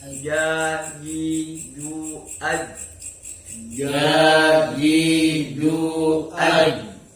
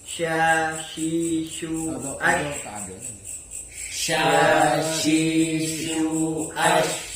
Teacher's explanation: Pangkal lidah kemudian pindah ke tengah lidah. Yang menggunakan alat ucap tengah lidah adalah jim, shin, dan ya.